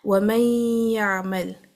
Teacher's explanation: Noon as an oral makhraj will be dropped and it will merge into the ya, but its gunna will stay. So when we're reading this, we read it with the gunna. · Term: naqis